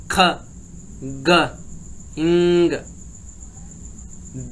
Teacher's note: Back of the tongue against the soft palate और वेलम। जो जुबान का पिछला हिस्सा है ना, वो उसके ऑपोजिट साइड पे जाता है, जो हमारे सॉफ्ट पैलेट है, एल्वियोलर रिज से ऊपर। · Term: वेलर